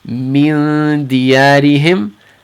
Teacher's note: So dal is in the front. We're going to keep our ikhfa kind of light near the front of the mouth.